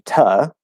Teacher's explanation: it commonly gets reduced already to ta instead of to